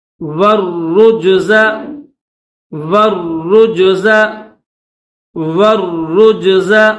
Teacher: والرجز، واو کے بعد یہ الف ہے درمیان میں تو یہ الف نہیں پڑھیں گے، اس کے بعد یہ جو لام ہے، ٹھیک ہے، بلیک، یہ لام ہے تو یہ لام بھی نہیں پڑھیں گے، واو کو ڈائریکٹ را کے ساتھ ملائیں گے اور را کے اوپر کیا ہے؟ تشدید، تو اس کو دبا کر اور سختی کے ساتھ پڑھیں گے۔